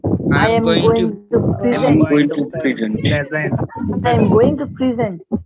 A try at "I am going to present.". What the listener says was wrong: প্রেজেন্ট না, প্রেজেন্ট। একটু জোর আছে ভাই, একটু জোর দিয়ে বলেন। প্রেজেন্ট। I am going to প্রেজেন্ট।